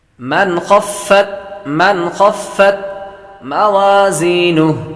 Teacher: نون ساکن کے بعد خا حروف حلق میں سے آ رہا ہے تو غنہ نہیں کریں گے۔